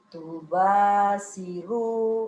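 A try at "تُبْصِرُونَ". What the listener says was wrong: Sinin enggak bisa keluar ya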